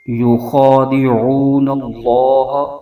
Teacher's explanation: خا کو پر کر کے پڑھیں گے، یہ حروف مستعلیہ کا حرف ہے اور عین کو حلق کے درمیانی حصے سے ادا کرنا ہے